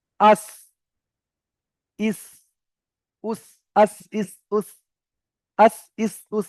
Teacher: জীবের আগাটা সামনের উপরের নিচের দুটো দাঁতের আগায় গিয়ে লাগবে।